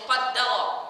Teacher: qa dibaca tafkhim, tebal ya. Qa dibaca dengan tebal. Kemudian da dibaca tipis. Ra dibaca juga tebal.